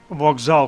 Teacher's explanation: вокзал пишемо через K але вимовляємо звук Ґ